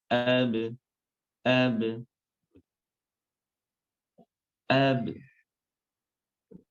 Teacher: Setelah sempurnanya syiddah, kemudian muncullah sifat qalqalah, yaitu memantul.